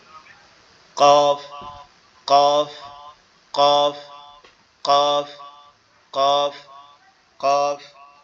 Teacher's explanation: জিহ্বার গোড়া তার বরাবর উপরে তালুর সঙ্গে লাগবে, অর্থাৎ জিহ্বার গোড়ার অংশটা উপরের তালুর সঙ্গে লেগে উচ্চারিত হবে